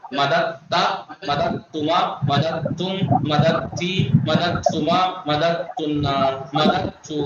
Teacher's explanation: جہاں جہاں تے تھی دال کے بعد وہاں ادغام ہے